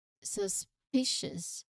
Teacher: you emphasize on the second syllable